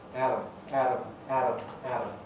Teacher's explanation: the alveolar contact is speeded up making it into a kind of tap almost like the r sound of some languages